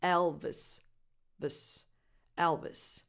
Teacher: The last vowel is just a schwa. So you go from the V to the voiceless S at the end of the name.